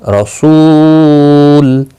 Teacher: سو ایک الف کی مقدار کے برابر کھینچ کر پڑھا جائے گا، تنوین پر گننا ہوگا. رسول، اور وقف کی صورت میں لام ساکن پڑھا جائے گا